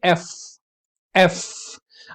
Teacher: आप देखेंगे अपर टीथ और लोअर लिप टच हो रहा है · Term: फ्रिकेटिव्स